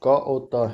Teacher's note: अल्पप्राण अघोष क और त है